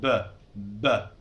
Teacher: B is voice sound. B. B. It's like touching your lips.